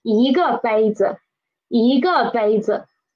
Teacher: 我, and then the verb 买, 我买, and a cup is 一个杯子, and please pay attention to the 个 here. When we are learning it individually, it is a fourth tone syllable, but when we are using it as a major word, it is usually neutral tone